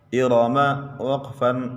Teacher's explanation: ارم وقفاً، ارم کلمے کے آخری حرف پر پڑا زبر ہے، وقف میں گرا دیں گے، کلمے کا آخری حرف ساکن ہو جائے گا۔ را کے اوپر زبر ہے، را کو موٹا پڑھیں گے